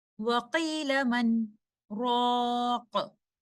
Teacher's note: And here we need to note this point that because there is a sakt, a breathless pause, so noon sakina is not meeting with letter ra, so there will be no idgham. We will recite noon sakina clearly.